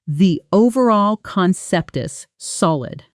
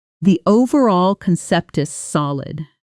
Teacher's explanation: Native speakers place clear emphasis on overall and solid, while lighter, quicker words like the, concept, and is almost blur together.